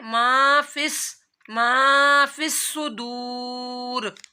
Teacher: وَحُصِّلَ مَا فِي الصُّدُورِ اسی طرح واو ساکن اس سے پہلے پیش آ رہا ہے تو صاد کی سیٹی اور واو مدہ کرنا ہے، لمبا کرنا ہے